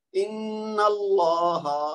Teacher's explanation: اس کو چونکہ غنہ کرنا ہے نون مشدد کو, تو جب بھی نون مشدد آئے یا میم مشدد آئے, وہاں چاہے رک رہے ہوں چاہے ہم ملا کے آگے پڑھ رہے ہوں, دونوں صورتوں میں وہاں غنہ کرنا ہے. دو حرکت تک آواز کو ناک میں روک کے پھر ادا کرنا ہے